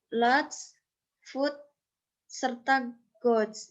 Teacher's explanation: peninggian lidah di daerah langit-langit lunak. Tapi selain itu juga bibirnya itu membulat.